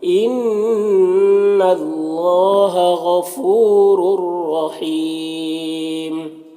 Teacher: رور دونوں را کو پر پڑھیں گے اور تنوین کے بعد یہاں پر را حروف یرملون میں سے ہے تو ادغام تام ہوگا، بغیر غنہ کے پڑھیں گے. اور وقف کی صورت میں مد عارض وقفی ہوگا تو اس طرح سے پڑھیں گے.